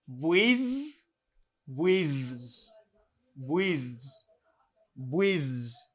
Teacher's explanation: And when I have TH again, now I have voice TH. That means this TH has a vibration. It vibrates.